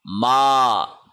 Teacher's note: میم کے اوپر کھڑی زبر ہے، اس کو 1 سیکنڈ لمبا کھینچ کے پڑھا جائے گا۔ احتیاط کرنے کی ضرورت ہے، اس کو ناک میں نہ پڑھا جائے، ماں کر کے نہ پڑھا جائے بلکہ ما کر کے پڑھا جائے، یعنی اس کو پڑھتے وقت ناک سے سانس نہیں لینا، منہ سے سانس لینا ہے۔